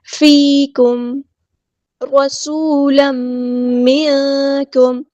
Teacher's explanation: سین کی سیٹی ہم واضح کریں گے، واؤ مد آیا تو مد اصلی کریں گے۔